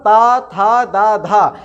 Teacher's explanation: ये हम लोग दंत से बोलेंगे, अर्थात ता था दा धा, इनको यदि हमें बोलना है तो हमारी जो रसना है, जो हमारी जीभ है, उसे हमें ऊपर वाले दांत का जो भीतरी हिस्सा है उसमें स्पर्श करना पड़ता है। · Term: तवर्ग